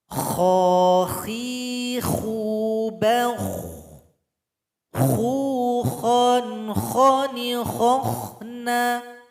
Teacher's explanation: lidah kita angkat ke langit-langit kita. Itu huruf kho. Sehingganya dia bunyinya tebal.